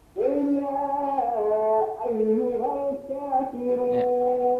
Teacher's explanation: Qul ya ayyuhal a-nya suaranya biasa aja. Ayyuhal jadi tekanannya ada di ya bukan di a.